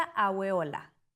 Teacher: A veces se pronuncia aueola, con una W intermedia.